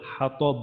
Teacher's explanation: হা হচ্ছে হলকের মাঝখানে, তটা মোটা আর বায়ে আমাদের যদি ওয়াকফ করি তাহলে কলকলা